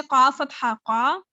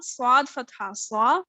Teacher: قاف کو تو پور پڑھنا ہے، لیکن جو صاد ہے اس کو ڈبل پور پڑھنا ہے کیونکہ اس کا حق ہے